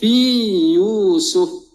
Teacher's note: kita jelaskan huruf ya yang pertama, yang sakinah itu sebelum menyebut ya pada kalimah berikutnya yang berbaris dhammah, supaya tidak berlaku fi Yusuf. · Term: mad tamkin